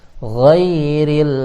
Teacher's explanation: An'amta jangan alaihim itu kurang, harus alaihim siratal ladzina an'amta 'alaihim alaihim mengalir, alaihim langsung pindah ke alaihim mengalir, jangan goiri itu kurang, tapi ghairil ada ghairil ya, ghairil jangan mantul lamnya, ghairil mengalir